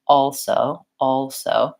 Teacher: sound correct so I do have to say also also but I just very very quickly and lightly touch my tongue up for the L and then it goes right into that s position